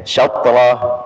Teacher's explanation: jangan diputus syaqrah, ya, digetarkan saja kemudian lanjut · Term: qalqalah